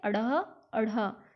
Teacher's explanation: झटके से जीभ नीचे गिरी